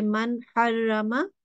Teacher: There is a nun sakin followed by ha here. So we will say the nun, we will say it properly and don't make a nasal sound